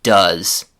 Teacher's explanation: But in the form that we use with he, she, and it, that ooh vowel sound changes to an uh like in the word sun, butter, or money. So we don't say dos, we say does.